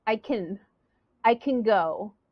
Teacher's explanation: that louder and longer I will say I can go and can is not stressed it's going to be a little short